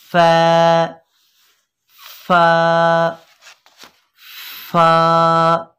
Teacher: और फा, इसका मखरज है ऊपर के दांतों के किनारे और निचले होंठ का तर हिस्सा। ऊपर के दांतों के किनारों को जब हम निचले होंठ के तर हिस्से पे लगाएंगे तो अदा होगा